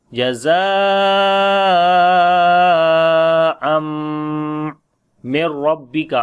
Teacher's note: After the tanween the next letter is mim. We make idgham with gunna, like the mim is coming with shadda sign